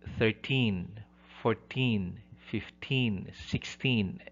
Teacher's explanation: Primary stress is on the last syllable, specifically the teen.